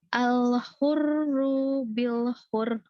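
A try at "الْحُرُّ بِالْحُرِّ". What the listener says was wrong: Ru yang ini kepanjangan yang pertama, yang ini ditahan justru. Tahan bil hur. Nah, kenapa tahan? Karena dia ada tasydidnya. Kalau tadi bacanya bil hur, itu berarti nggak ada tasydid. Iya, jadi terjaga tasydidnya, bukan soal tawasutnya, tapi terjaga tasydidnya kalau di sini.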